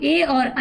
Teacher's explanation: ए और ऐ बोले जाते हैं कंठ तालू से